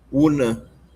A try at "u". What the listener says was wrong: Não é una, não é U. Simplesmente U da união, simplesmente.